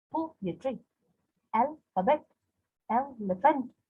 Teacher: stressed followed by two unstressed, like poetry, alphabet, elephant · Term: dactylic foot